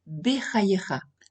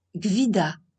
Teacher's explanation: Pour le premier mot, on prononce légèrement le sheva, bechayecha, alors que pour le second, on ne le prononce pas, gvida.